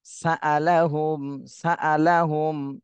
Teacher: তানভীনের পরে ইকফার হরফ সিন এসেছে এজন্য এই তানভীনে ইকফা গুন্না করতে হবে